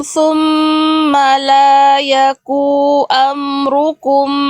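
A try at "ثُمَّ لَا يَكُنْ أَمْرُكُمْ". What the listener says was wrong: Yang pertama, ya, la yakun nun sukunnya nggak dibaca. Bunda tadi bacanya la yaku am. Nah, nunnya hilang, ya, maka kalau dihilangkan nunnya ini salah besar karena mengurangi huruf.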